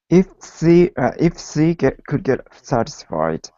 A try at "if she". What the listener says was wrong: I want you to pause in between if and she so you can pronounce it SH. Because right now you're pronouncing an S like you're saying if she. Okay, it's if she.